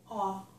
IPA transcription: ɔ